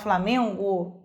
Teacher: Percebam que o N foneticamente some. Então, ou seja, não existe encontro deste N com o G para que ocorra o encontro consonantal imperfeito.